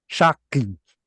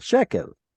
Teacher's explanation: Hence, Hebrew fixed it by sticking a segol in there, shakel, and then this segol had an influence on the preceding vowel and turned it into a segol as well, shekel. Now that's the form that we know.